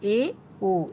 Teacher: वे स्वर जिनके उच्चारण में मुह आधा बंद रहता है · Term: अर्ध संवृत स्वर